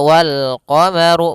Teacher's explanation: ru-nya dibaca tebal karena dia huruf ra yang berharokat dhammah